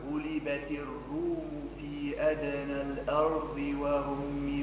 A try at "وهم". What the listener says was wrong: ما قولش وهم. وهم قداش من حرف فخمه؟ الواو والهاء والميم، بينما هم ثلاثة مرقين. وهم وهو وهم من بعد غلبهم.